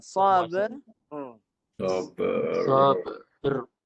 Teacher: bunyi r tu kita nak tebalkan. Kalau tebalkan guna hujung belakang lidah. Bunyi belakang lidah ditebalkan. Dia agak dia tebal.